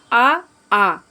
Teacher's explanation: विवृत आ ये विवृत हैं, यानी एकदम खुले हुए।